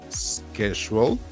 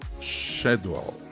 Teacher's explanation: The word schedule is pronounced with a sk in American English, schedule, and a sh sound in British English, schedule.